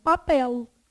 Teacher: Com L alveolar. Lá no céu da boca